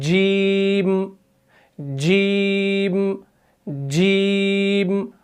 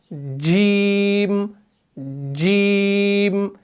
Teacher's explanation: आपने कुछ गौर किया यहां पर कि जो ही आप जीम को पढ़ने वाले होते हैं, जो ही आप जीम को स्टार्ट करने वाले होते हैं, तो आपकी जुबान का जो बीच वाला हिस्सा है ये ऊपर के तालू के साथ लग जाता है